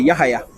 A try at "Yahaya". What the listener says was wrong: No, pronounce the H hard. Yahaya.